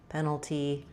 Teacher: Then that means my letter A is a short, reduced little schwa